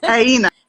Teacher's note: like a G and a Y, but in the back of the throat